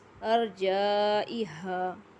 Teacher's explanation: یہاں را کو موٹا پڑھنا ہے کیونکہ را خود ساکن ہے لیکن را کے پچھلے حرف کے اوپر زبر ہے تو را کو موٹا پڑھا جائے گا۔